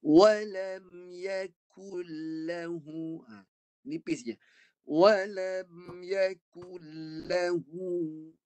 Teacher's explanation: Depan daripada qaf. Pangkal lidah qaf, depan sedikit kaf. Jadi bunyi yang kaf ni pula di kategori nipis.